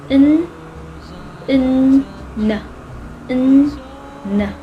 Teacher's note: for the letter N, it is an alveolar nasal